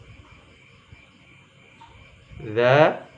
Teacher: ujung lidah menyentuh 2 gigi seri depan